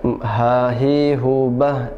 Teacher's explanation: Hak besar biasa itu diistilahkan dengan ha yang keluar dari pangkal tenggorokan